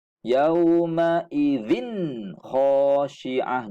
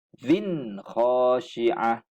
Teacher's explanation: Bila tanwin bertemu kha, kita kena bunyikan dengan izhar, dengan jelas bunyi tanwin tu. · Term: izhar halqi